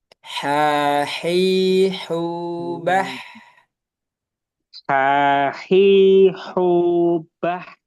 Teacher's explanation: Nah, sekarang huruf ha ini satu makhraj dengan ain juga. Kalau ha dia alirannya lebih lebih panjang daripada ain.